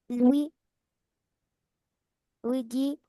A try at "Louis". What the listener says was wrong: Non. Non, non, dis pas Louis dit. Louis.